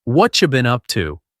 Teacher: What and you become whatcha.